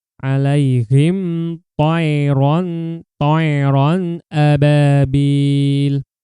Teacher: Bil dipanjangkan 2 harokat ya, karena diikuti dengan alif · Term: mad tabi'i